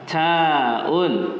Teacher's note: Bila sebut huruf ta ni dia macam ada angin sikit